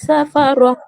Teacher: র এর উপর যেহেতু এখানে জবর আছে, তাই র এখানে পুর করে মানে মুখ গোল করে পড়তে হবে।